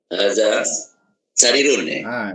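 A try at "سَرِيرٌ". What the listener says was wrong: Sarirun. Okey, sini ada ya mat tu. Jadi kena panjang sikit. Haza sarirun. Ha pun dia 2 harakat. Haza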